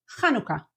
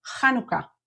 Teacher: everyone pronounces it kanuka stressing the first syllable